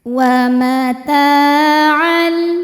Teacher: huruf ta hukumnya mad tabi'i dhahiri, sebab ada alif yang sebelumnya fathah. Cara bacanya panjang 2 harokat.